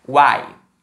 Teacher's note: Nesse uai, a gente tem o A, que é a vogal, e o U e o I como semivogais. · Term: tritongo